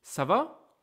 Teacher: When I say ça va, if I don't exaggerate my tone, people might mistake it for a statement instead of a question. So I really make my tone super high at the end